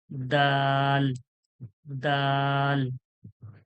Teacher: জীবের আগালটা সামনে দাঁতের গোড়ায় যখন লাগাচ্ছি দাল হয়ে যাচ্ছে